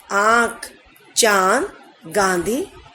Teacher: इनका उच्चारण नाक और गले दोनों से होता है, यानी कि जब हम इनका उच्चारण करते हैं तब हमारा मुंह खुल जाता है, तो नाक और मुंह दोनों से इसकी आवाज निकलती है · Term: अनुनासिक